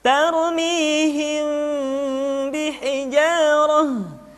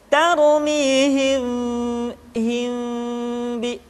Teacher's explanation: Maka pada tahapan ini, mim mati bertemu dengan ba bukan saja mesti ditahan dan dimasukkan ke rongga hidung, akan tetapi mim mati bertemu dengan ba mesti dibaca dengan sempurna. Caranya, kita baca mim dengan suara yang samar. Caranya, kedua bibir kita direnggangkan, tidak sampai rapat secara sempurna. Contoh, tarmihim bihijarah, tidak dibaca tarmihim bi, mestinya tarmihim bi. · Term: ikhfa syafawi